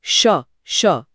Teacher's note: जीभ पीछे मुड़कर कठोर तालू को छूती है। · जीभ का अगला हिस्सा थोड़ा ऊपर और पीछे की तरफ रोल हो रहा है। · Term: मुरधन्य श